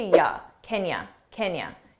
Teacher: you can make that unstressed too and reduce it to ya